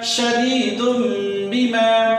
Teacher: یہ تنوین کی آواز حذف ہو کر کے میم کی آواز نکلے گی. تنوین کی آواز ختم ہو جائے گی، سائلنٹ ہو جائے گی. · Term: اقلاب